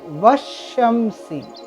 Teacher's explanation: الف کو بھی ہم چھوڑ دیں گے، ڈائریکٹ جو لیٹر یہاں ہے واو، واو سے شین کو ملا لیں گے. واو شین زبر وش, شین میم زبر شم, وشم, سین زیر سی, وشمسی. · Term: حروف شمسی